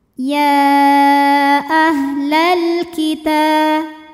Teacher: Ta mad tabi'i muqaddar karena huruf ta berbaris fathah panjang. Cara bacanya panjang taknya 2 harokat.